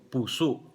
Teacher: Ang puso, long vowel yung first syllable at glottal stop yung last syllable